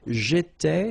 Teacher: so final S not pronounced